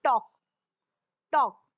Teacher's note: Look at the word टॉक. देखिए TALK इसको हम टॉक बोलते हैं. इसमें L साइलेंट होता है. हम टाल्क नहीं बोलते हैं. TOLK टॉक, टॉक.